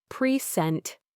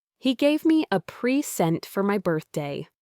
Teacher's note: Present, stress on the first syllable, as a noun, meaning a gift.